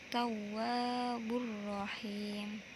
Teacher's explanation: Yang terakhir, tanda garis warna merah muda tajwidnya adalah idgham bila gunnah, dibaca tidak berdengung karena tanwin bertemu dengan salah satu huruf idgham bila gunnah yakni ra